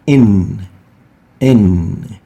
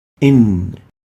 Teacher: your incisors teeth in you would realize that the known is articulated at the tip of the tongue opposite to the gum of the upper incisors teeth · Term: noon